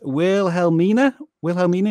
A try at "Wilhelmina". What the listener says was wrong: It's Wilhelmina. The H is silent.